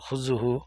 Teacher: জু বললে হবে না, কারণ এখানে জালটা জিহ্বার আগা থেকে হবে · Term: জালের উচ্চারণ